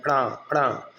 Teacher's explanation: तो आप क्या होगा? आपकी जीभ ऊपर जाएगी और ऊपर से तालु से टकराकर अचानक से नीचे गिर जाएगी। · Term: उत्क्षिप्त